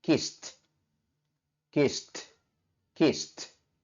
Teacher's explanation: Kemudian pada kata kiss, akhir bunyi bentuk pertama yaitu bunyi s, sehingga ed di belakangnya kita lafalkan dengan letupan huruf T, sehingga dibaca kissed, kissed, kissed.